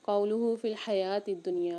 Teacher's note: یہاں پر یا کے اوپر کھڑا زبر ایک الف میں دار یا کو کھینچ کے پڑھیں گے۔